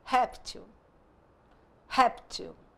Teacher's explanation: a penúltima sílaba é tônica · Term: paroxítona